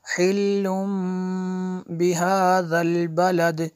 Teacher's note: देखिए तनवीन के बाद बा हुरूफ़े तनवीन के बाद बा है, तो अगर तनवीन के बाद बा आ जाए तो यहाँ पे इक़लाब होगा। नून साकिन को जो है मीम से बदल के पढ़ेंगे